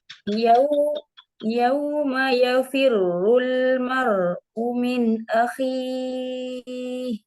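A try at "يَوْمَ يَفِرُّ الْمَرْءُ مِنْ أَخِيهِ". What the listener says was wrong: Hamzah ini Hamzah ini syiddah ya. Jadi kuat. U. Jadi nggak cuman umin, umin, umin, umin. dia harus jelas karena dia sifatnya syiddah.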